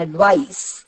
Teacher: അഡ്വൈസ് എന്ന് പറയുമ്പോൾ അഡ് എന്നതിന് അത്ര ഉച്ചാരണമില്ല, വൈസിനാണ് ഉച്ചാരണം.